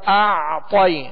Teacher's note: کھینچنے کے بعد اعطی، تو عین جو ہے اس پر جزم ہے، عین ساکن ہے، لہذا اس کا سکون کامل ادا کریں گے. اعطی، طا کو پر پڑھیں گے اس لیے کہ حروف مستعلیہ میں سے ہے.